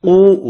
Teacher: واو مدہ ہے، واو مدہ کو ایک الف کی مقدار میں کھینچ کر پڑھنا ہے